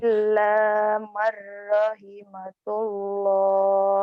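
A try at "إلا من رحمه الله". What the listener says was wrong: Bukan tullah kan nggak ada titiknya. Ini ha. Rahimahullah ya.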